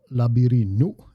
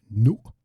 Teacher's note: Okay, so section 2, Labirinu, and there's that glottal stop again. You hear me say nu, the little push at the end there. That's the glottal stop.